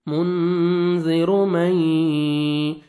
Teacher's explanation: نون ساکن کا ادغام ہے، نون ساکن بنا حروف یرملون میں سے یہ آ رہا ہے، نوز میں ساؤنڈ لے کے جائیں گے، ادغام کریں گے غنہ کے ساتھ